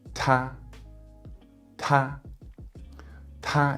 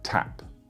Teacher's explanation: the T, the P, and the K in Chinese are heavily aspirated, whereas in English, they're less aspirated.